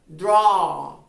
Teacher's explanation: una vocal en la que comienzan diciendo una a y terminar diciendo algo como una o